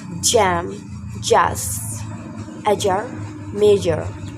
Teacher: stop the air completely, then release abruptly with a voiced sound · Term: the sound j